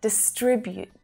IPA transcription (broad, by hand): dɪˈstrɪbjuːt